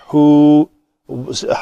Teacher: ہا کے اوپر پیش ہے تو شفتین گول ہو جائیں گے